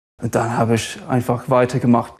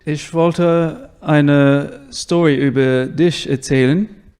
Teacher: when it comes to the soft ch he kind of turns that into sh